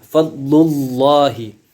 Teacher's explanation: maka itu hukumnya adalah lam tebal, maka lafzul jalalahnya dibaca tebal